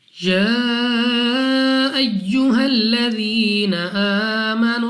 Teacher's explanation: یا پر کھڑا زبر اس کے اوپر مد ہے تو ہم نے اس کو 3 یا 4 سیکنڈ تک کھینچ کر پڑھنا ہوگا